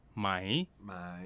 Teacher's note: is the more common pronunciation of the question particle my my in regular conversation when spoken quickly the rising tone changes to a high tone